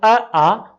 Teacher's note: तो अ, आ कंठ से बोले जाते हैं, इसलिए सवर्ण है।